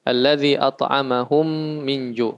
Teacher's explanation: Cara membacanya juga didengungkan 3 harokat. Langsung masuk ke huruf mim yang kedua. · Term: idgham mimi